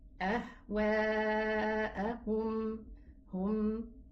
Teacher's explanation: We stop on the meme, we read it as a sukoon letter, and it belongs, the meme belongs to the in-between character. So when we stop on it, we give it its ghunna, we give it its time so that the ghunna is properly pronounced.